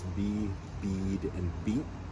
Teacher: what you have there in the first two is a long iota, and what you have in the third one is a short iota